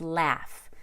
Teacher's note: that short a and laugh is very characteristic of American